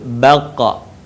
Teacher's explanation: Dalam posisi mati maka terdengar suaranya memantul. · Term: huruf qa